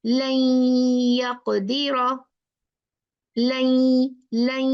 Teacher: नून पढ़ा ही नहीं क्योंकि ये मर्ज हो गया या में। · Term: इदगाम